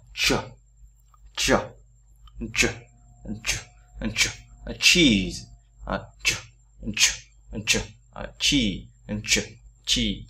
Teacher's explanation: Thì cái âm này đấy nó là cái âm rất là mạnh và rất là nặng, đọc phải rất là nhiều hơi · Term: âm chờ